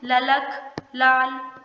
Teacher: जब आप ल वर्ण को उच्चारित करते हैं तो आपकी जीभ दांतों को स्पर्श करती है, इसलिए इस व्यंजन को दंतीय व्यंजन कहा जाता है। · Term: पार्श्विक व्यंजन